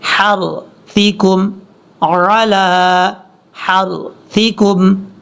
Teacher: ہا باریک ہے، آگے را پورا ہے